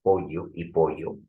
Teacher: normalmente en la sierra pronuncian la l más que la y